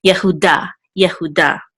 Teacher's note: And the accent mark is over the Daled, so we'll give the last syllable the accent